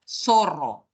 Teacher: es cuando llevamos la lengua entre los dientes no zorro zorro la mayoría de peruanos pronuncia zorro la lengua la lleva arriba de los dientes